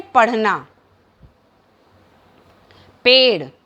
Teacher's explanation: इनका उच्चारण जो है जीभ को हम ऊपर उठाकर आगे की ओर फेंक कर करते हैं, अर्थात हम अपने मुख में अपनी जिह्वा को आगे की ओर ऊपर उठाते हैं फिर आगे की तरफ फेंकते हैं, इसीलिए हम इनको उच्छिप्त व्यंजन करते हैं।